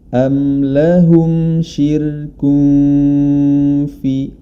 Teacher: Huruf rnya dibaca tipis karena didahului oleh huruf yang berharakat kasrah. Yakni huruf syin berkasrah. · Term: ro tipis